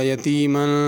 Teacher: یتیمن کے میم کے اوپر غنہ ہوگا